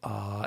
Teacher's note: it's the vowel that is the jaw is the most open, the throat is the most open, so they can see down into your throat.